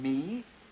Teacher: The bilabial nasal as in me